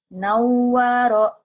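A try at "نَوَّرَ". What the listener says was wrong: Benar.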